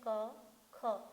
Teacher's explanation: देखिए क और ख के उच्चारण में कंपन नहीं है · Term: अघोष